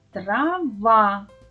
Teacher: наголошений склад в слові трава другий